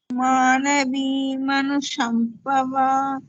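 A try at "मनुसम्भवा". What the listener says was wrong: Shambhava, it's not Shambhava. Sambhava.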